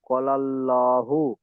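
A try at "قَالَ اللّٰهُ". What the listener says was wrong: জি, ক টান দেন, প্রথম ক আলিমাদা আছে। লাল্লাহু।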